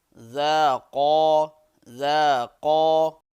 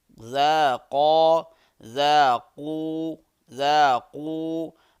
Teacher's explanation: قاف کو اس کے مخرج سے ادا کریں گے موٹا پڑھ کے